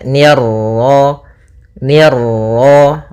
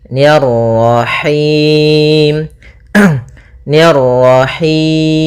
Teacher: Nah, kemudian pada lafaz ma ada bacaan mad tabi'i yaitu fathah bertemu alif, ni tipis ketemu ra yang ra tafkhim, ra tebal